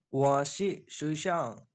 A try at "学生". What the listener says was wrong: শুয়েশাও মানে হচ্ছে কলেজ, আপনাকে বলতে হবে শুয়েশাং, শাং, শুয়েশাং।